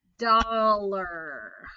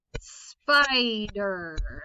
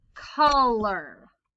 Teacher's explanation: as in color and again i'm not saying spider or dollar it's the unaccented syllable i put my emphasis on the first syllable and then the er is unaccented